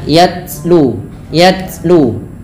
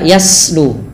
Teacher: Cara membacanya adalah dengan menyesuaikan daripada makhraj dan sifat huruf ta. Sifat huruf ta yang paling menonjol dalam ketika dia sukun adalah sifat syiddahnya, yaitu tertahannya suara. Dan langkah kedua yaitu adalah sifat hamasnya, mengalirnya nafas.